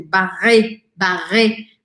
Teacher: Se fosse só o E sem acento, eu não falaria ele. Mas como este E tem um acento, eu falo bem aberto. Barré, barré, com um R arranhado do francês.